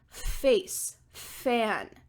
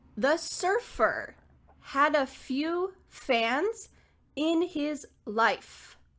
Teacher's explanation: Even though your mouth and your teeth are in the same position, there's not going to be any vibrations. You're not going to be using your voice. Instead, we're just going to be using air. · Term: the F sound